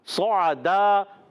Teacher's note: صعدن میں، صعدن میں صاد پر زبر، عین پر زبر، دونوں پر زبر ہے تو حرکات کو نہیں کھینچیں، مگر صاد کو موٹا رکھیں گے، عین کو باریک رکھیں